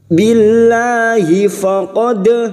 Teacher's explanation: dal sukun yang mati asli di tengah kalimat jangan lupa dipantulkan, namanya qalqalah sugro